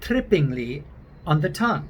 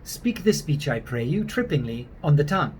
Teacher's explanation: they would use more of an American style R, and they wouldn't roll it